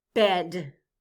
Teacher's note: The vowel sound in the middle of bed is eh, the short E sound. B, e, d. Eh.